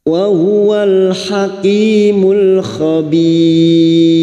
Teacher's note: Khabir bertemunya mat dengan huruf hidup yang dibaca waqaf, mat arid li sukun 4 harokat kita panjangkan, dan huruf ro yang dibaca waqaf dan didahului ya sukun, maka huruf ro kita baca tarkik dengan posisi bibir kita yang tersenyum